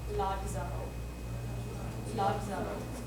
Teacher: In Latin, you just add a D before you say the Z.